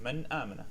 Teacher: So if you have a noon sakin or tanween and after it is one of these letters, you will basically fully show the noon without hiding it, without playing around with it.